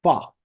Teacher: ফা সাউন্ড হচ্ছে আমার ঠোঁটটা দাঁতের নিচে যাবে